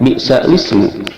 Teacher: lam sukun diganti dengan harokat huruf hamzah sesudahnya sehingga menjadi li. Kemudian huruf hamzah kasroh dari kata ismun dibuang sehingga berbunyi lismu. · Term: naqal